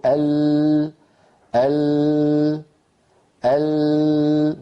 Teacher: ضعوا يدكم على حنجرتكم وقولوا ال، فتجدون تحت يدكم ارتجافا واضحا واهتزازا للوترين الصوتيين